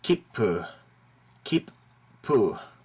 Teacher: both consonants with a very short pause in between